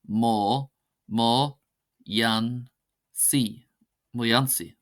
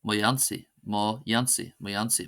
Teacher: The slender version is pronounced as a Y sound